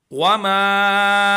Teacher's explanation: वमा इसको हम 2 से 3 अलिफ के बराबर खींचेंगे